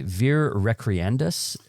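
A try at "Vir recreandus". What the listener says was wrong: Instead of the V sound, it's a W sound.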